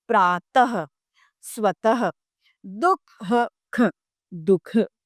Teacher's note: अगला है विसर्ग की मात्रा यानी अह की मात्रा। दुह खक, विसर्ग की मात्रा का प्रयोग जब करते हैं तो ह का उच्चारण किया जाता है